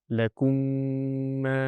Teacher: So, when I'm going in a flow of recitation, I have to say the whole thing properly and merge the two meems, the correct pronunciation will be lakum and that nasal sound will be produced. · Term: idgham